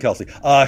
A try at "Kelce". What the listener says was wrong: name is pronounced Kels, not Kelsey. Kels. Kels is how you pronounce it.